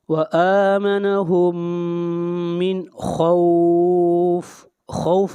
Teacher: خوف کے اوپر مد عارض لین ہو رہا ہے، یہاں پر حروف لین واو کے بعد عارضی سکون ہے